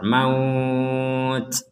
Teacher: kalau kita berhenti di sini, maut itu ada nafas keluar